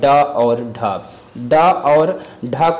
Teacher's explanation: उत्क्षिप्त व्यंजन यानी इनके उच्चारण में जीभ को करके मूर्धा को स्पर्श करके तुरंत नीचे गिराना होता है